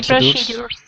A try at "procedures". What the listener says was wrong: Safety procedures, exactly. So this procedures. So this D makes a J sound. Procedures. So you do not say procedures. So you do not say the D hard. So it's safety procedures. Procedures. So it makes more of a J sound and not the D sound.